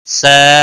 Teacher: سا الف مدہ ہے، 1 الف کے برابر کھینچ کر پڑھیں گے